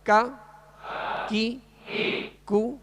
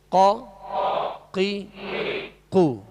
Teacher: کاف کو جو ڈنڈی والا کاف ہوتا ہے اس کو باریک پڑھیں گے، اور قاف جو دو نقطے والا ہے اس کو پر پڑھیں گے، موٹا پڑھیں گے